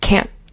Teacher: Instead of fully pronouncing the T, we normally um we normally stop the N sound. Uh so the T is kind of like a hard stop instead of a real T sound. So it's like can't can't can.